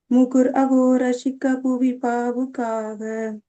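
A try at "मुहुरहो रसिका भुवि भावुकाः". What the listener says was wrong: ரஷிகாலாம் இல்ல, ரசிகா. இனி அந்த ஷா கொஞ்சம் எல்லாத்துலயுமே ஷா போட்டுக்கிறீங்க. ரசிகா அப்படி வரணும். ரசிகா நெடில். முகுரஹோ ரசிகா புவி பாவுகாக.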